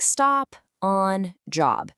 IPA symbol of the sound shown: ɒ